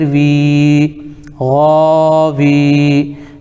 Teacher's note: یا ساکن سے پہلے واو کے نیچے زیر ہے، اس لیے یا مدہ ہوگا، ان کو تھوڑا کھینچ کر پڑھیں، جیسے واو یا زیر وی، غاوی۔